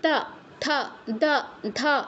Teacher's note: ত বর্গের আন্ডারে যেগুলো আছে সেগুলো যখন আমরা উচ্চারণ করব জিহ্বা আমাদের উপরের পাটির দাঁতকে স্পর্শ করবে। ত থ দ ধ, উপরের পাটির দাঁতকে স্পর্শ করবে। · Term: দন্তবর্ণ